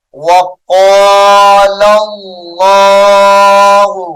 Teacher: اس میں جلالت اللہ کا لام پر پڑھا جائے گا۔